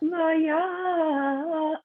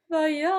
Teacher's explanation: put a glottal stop on the ayin